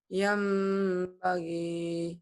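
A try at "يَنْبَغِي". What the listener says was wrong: Oke.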